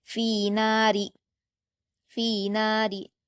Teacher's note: اس کے بعد فا پر یا مدہ ہے 2 حرکات کھینچیں گے، نون پر الف مدہ ہے 2 حرکات کھینچیں گے، اور را پر زیر کی حرکت ہے تو جلد پڑھیں گے اور باریک پڑھیں گے